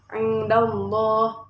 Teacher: lafaz Allah dibaca tafhim karena jatuh setelah harokat fathah